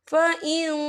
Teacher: یہ دیکھیں فإن، یہاں نون ساکن ہے، نون ساکن کے بعد جو ہے تا آ رہا ہے اور تا جو ہے اکفا کا ورڈ ہے، تو ہم یہاں اکفا کریں گے، نون ساکن کی آواز کو ناک میں چھپائیں گے